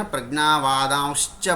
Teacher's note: అనంతరం చకారస్య కారణేనత్వ సంధౌ సహయేవ సకారః శకార రూపేన పరివర్తితః అనంతరం యధాపూర్వం పూర్వం విద్యమాన స్వరః ఆకారః అనునాసిక యుక్తః అథవా అనుస్వార యుక్త జాతః